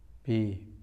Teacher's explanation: Itu berarti menggunakan bibir luar. Padahal ba itu mainnya adalah bibir dalam, atas dan bawah.